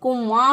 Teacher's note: ये जो नाक में आवाज़ ले जाना, ये जो है इसको कहते हैं गुन्ना करना, इख्फा करना। नून की आवाज़ को छुपा कर गुन्ना करते हुए, नून गुन्ना जो है वो करते हुए इसको अदा करना।